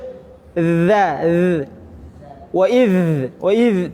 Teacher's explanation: Wa idh dia hanya mengalir tanpa ada desis. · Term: huruf dzal